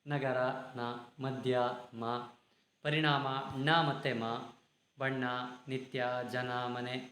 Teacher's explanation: ಅನುನಾಸಿಕ ಅಕ್ಷರಗಳನ್ನ ಗುರುತಿಸಿ ಬರೆಯಿರಿ ತುಂಬಾ ಸುಲಭ ಅನುನಾಸಿಕ ಅಕ್ಷರಗಳು ನಮಗೆ ಗೊತ್ತಿದ್ದಾವೆ ಯಾವುದು ವರ್ಗದ ಐದನೇ ಅಕ್ಷರಗಳು ಮೂಗಿನ ಸಹಾಯದಿಂದ ಉಚ್ಚರಿಸುವ ಅಕ್ಷರಗಳು